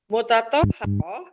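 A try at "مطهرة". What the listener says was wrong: Mutahharatun. Enggak ada tanya mutahharatun.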